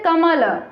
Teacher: कमल में क पे बल दिया गया है और म पे दिया गया है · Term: बलाघात